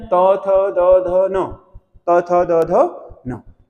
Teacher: जीभ दांतों के साथ टकराती है, इसीलिए इनको बोलते हैं दंत